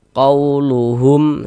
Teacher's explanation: Kalau ada huruf waw sukun sebelumnya harokat fathah, maka huruf waw sukunnya adalah huruf lin. Maka kita baca lunak, lembut saja.